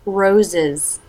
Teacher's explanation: th tongue up to make the N Roses are consonant shape teeth together for the Z sound part through the schwa and together again for the Z sound